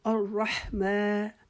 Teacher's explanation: الرحمن را کے اوپر چونکہ شادہ یہ اس کو رکاوٹ سے پڑھیں گے اور زبر کی وجہ سے اس کو را کو موٹا پڑھیں گے